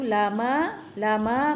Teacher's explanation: ma dibaca 2 harakat, hukumnya mad asli